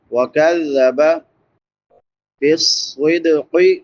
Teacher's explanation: صاد سیٹی والے حروف میں سے ہے اور حروف مستعلیہ میں سے بھی ہے، موٹا بھی پڑھیں گے، سیٹی بھی نکالیں گے